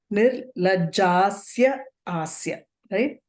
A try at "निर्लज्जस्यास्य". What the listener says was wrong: You can't break it like that. You have to say that whole word together. Nirlajjasyasya.